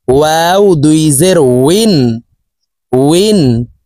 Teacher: ঠোঁট গোল করে দুই ঠোঁটের মাঝে ফাঁকা রেখে নিচের দিকে ধাবিত করে ওয়াও হরফের উচ্চারণ করব।